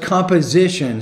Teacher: composition stress on the third syllable not the second